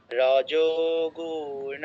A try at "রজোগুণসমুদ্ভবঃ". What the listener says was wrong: খুব ভালো হয়েছে কিন্তু গুতে দীর্ঘ করে ফেলেছেন রজগুণ বলেছেন রজগুণ